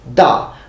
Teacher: I'm using a fourth tone or fourth pitch